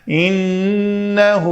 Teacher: نون مشدد تھی، ہم نے پڑھا ان، نون کے اوپر غنہ کرنا ہے، یعنی دو حرکت کے برابر ٹائم دے کر فتحہ زبر کی حرکت کو پڑھنا ہے